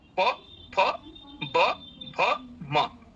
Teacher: एक ऊपर ओष्ठ है और एक नीचे है। दोनों ओष्ठों से ही इन वर्णों का उच्चारण होता है